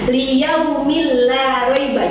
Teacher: jadi hanya dimasukkan saja bunyi tanwinnya ke huruf lamnya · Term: idgham bila gunnah